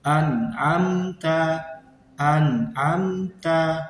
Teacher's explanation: Selanjutnya adalah an'amta. Nah, jadi di situ ada nun sukun bertemu dengan huruf ain, maka cara membacanya jelas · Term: idhar